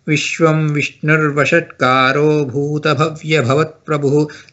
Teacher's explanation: In some cases, you may have a s sound, or in some cases, r sound. So the visarga will get merged with the next line.